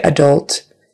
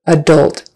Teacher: Adult, accent is on the second syllable.